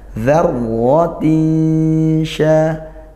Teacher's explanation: tanwin bertemu shin, ikhfa haqiqi dibaca samar ya, nun sukunnya masih ada sebagian, kemudian langsung juga menuju ke makhrajnya huruf shin. Di mana shin, yaitu tengah lidah naik. · dzarra ra fathah dibaca tafkhim tebal.